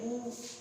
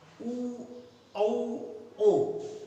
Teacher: ऊ, ओष्ठ की आकृति वृत्त के समान होती है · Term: वृत्ताकार